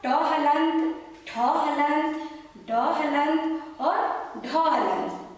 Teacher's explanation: उसके बाद मूर्धा, इसका सूत्र मैंने बताया था आपको ऋतु रसाणाम मूर्धा, अर्थात ट हलंत, ठ हलंत, ड हलंत और ढ हलंत, इसका उच्चारण स्थान मूर्धा से होता है